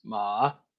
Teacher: And then you have a starts low and gets high at the end